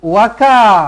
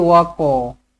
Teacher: Kalau kita sebut ka, dia akan jadi huruf kaf. Sedangkan dekat sini bukan huruf kaf, sini huruf qaf.